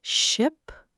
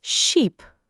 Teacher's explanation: Keep your mouth tighter and shorter for ship and stretch it for sheep.